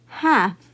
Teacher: every time I have F following an L I will not sound out the letter L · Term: silent